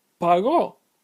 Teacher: So it looks like it should be a llana word, right? But it's pronounced pagó, with the stress on the last syllable, causing it to be aguda. That change occurs because there is an accent mark over the O, causing the intensity to be on the O instead of on the A, where it would be normally if the accent mark weren't there.